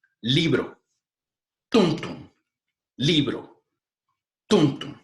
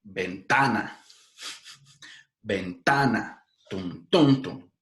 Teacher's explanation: El segundo tipo de plantilla son las palabras graves, que son las que tienen la prominencia acentual en la penúltima sílaba. Es decir, contando desde la última, no la última, sino la segunda.